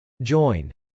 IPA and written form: dʒˈɔɪn (join)